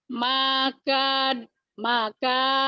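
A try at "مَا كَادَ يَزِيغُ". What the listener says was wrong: Ah, salah, salah, salah, salah, Salah, banyak panjang. Makada yazigu gitu Bu. Tapi nggak boleh putus. Itu kan nih Bu ya, sambungin ya Bu ya.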